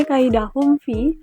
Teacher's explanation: Hukum tajwidnya ik syafawi karena mim mati bertemu huruf fa dibaca samar dengan dengung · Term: ikhfa syafawi